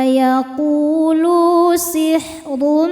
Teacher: Huruf ra dibaca tafkhim karena berharokat dhammah tanwin, maka ro-nya ini dibaca dengan tebal.